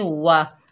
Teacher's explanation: होंठों की ना तमाम गुलाई से अदा होगा वाओ।